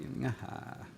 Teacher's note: It's put into lexergy as one phonological unit with the root form. In general, it's going to be nga, low tone, followed by high tone.